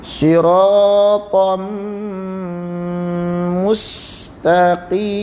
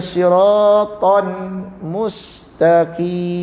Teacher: Tanwin pada ta bertemu dengan mim diidghamkan. Dia bunyikan mim.